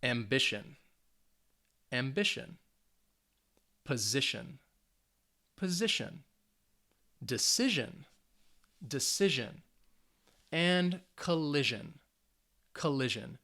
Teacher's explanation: they have three syllables the words end with tion or sion the stress is on the second to last syllable so it's going to be on that middle syllable · you should be able to hear that second syllable has a little more emphasis